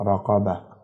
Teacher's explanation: گول تا پہ جب وقف ہوگا تو اسے ہا پڑھیں گے، مثلا رقبتن آگے وقف رقبہ۔